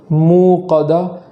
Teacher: موقدہ کے اندر جو واو مدہ ہے میم واو پیش منہ، تو یہاں ایک الف کے برابر تاخیر ہو، ایسا نہ ہو کہ جھٹکا لگا دیا جائے، موقدہ نہیں پڑھیں گے بلکہ موقدہ اس طریقے سے پڑھیں گے۔